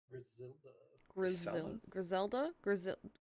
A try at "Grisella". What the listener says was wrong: So I don't think there's a D. I think it's Grisella.